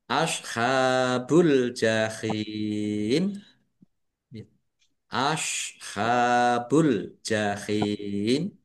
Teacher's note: Ha fathah berdiri mad thobi'i panjang dua harakat.